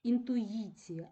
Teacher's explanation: і який знаходиться у позиції Після голосного він стає йотованим тобто він вимовляється як два звуки й і і позначається однією буквою